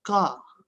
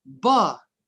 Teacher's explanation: when you produce the sound car the vocal cords do not vibrate all right but for when you produce the sound ba the vocal cords vibrate